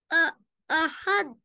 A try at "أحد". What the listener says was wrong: दाल को दबाना नहीं है, दाल पे सुकून है, शद्दा तो नहीं है, दबाना नहीं है। दबाए बगैर कनेक्ट करें हा और दाल को। ये अहद।